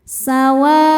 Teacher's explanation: Maka wunya ini panjang boleh empat boleh lima harakat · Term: mad wajib muttasil